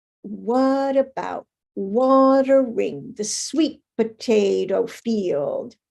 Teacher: same Rhythm but the unstressed syllables are squeezed in there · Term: stress timed language